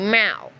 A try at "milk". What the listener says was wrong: Now you're saying wrong. You're saying Malk. It's like a disease.